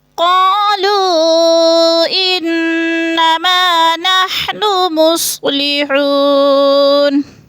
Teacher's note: قالو کو تھوڑا سا کھینچنا ہے، مد منفصل ہے، 4 الفی مد ہے، 4 حرکات کے برابر ہم نے اس کو لمبا کرنا ہے. ان کی نون مشدد ہے، سختی سے پڑھیں گے